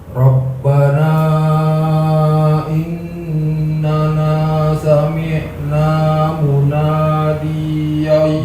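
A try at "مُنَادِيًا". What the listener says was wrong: D-nya pendek. Munadiyai. Saya contohkan munadiyai yunadi.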